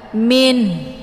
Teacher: sesudah dibunyikan bunyi Nun bunyi n kemudian ada tekanan di ujung ada bunyi ha Min kemudian wallah ini juga lafaz Allah yang dibaca tebal yaitu